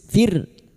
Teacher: Ra sukun yang didahului kasrah dibaca tarkik atau tipis.